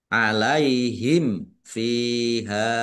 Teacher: mim sukun bertemu dengan huruf fa, bacaan idhar safawi, dibaca jelas